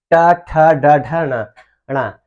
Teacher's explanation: जो टवर्ग है, ये कहाँ सटता है, मूर्धा में